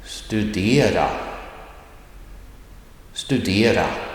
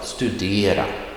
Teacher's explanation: Accent 1 har en stigande ton. En stigande ton, det betyder a rising tone. It goes up, a rising tone.